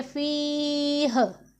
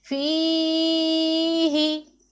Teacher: जब हम फ़ी ही में वक़फ़ करेंगे तो हा को साकिन कर देंगे, फिर इसे हम पढ़ेंगे फ़ीह।